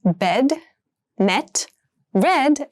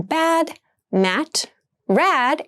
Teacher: all three sounds are front vowels and so are pronounced in the front part of your mouth